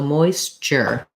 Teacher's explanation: my tongue goes to the t position and then it moves into this sh position position so ch is really a combination of t and sh